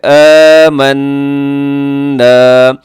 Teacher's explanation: یہاں نون مشدد غنہ ہے، ساتھ کھینچے گا